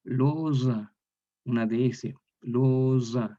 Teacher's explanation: Romance español, la O cerrada queda O, y el grupo T-yod, miren esta acá, T-yod como está en posición intervocálico, este grupo está entre vocales, una O y una A, entonces va a originar en la consonante, la Z sonora, la DS. Entonces aquí se lee loza, una DS, loza, igual que el italiano actual, pues, zucchero, no sé, zucchero, ¿no?